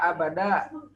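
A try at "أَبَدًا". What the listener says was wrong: Abadan dan tanwin. Abadan ya. Kita nggak baca pakai tajwid. Kita baca lengkap harakatnya. Abadan.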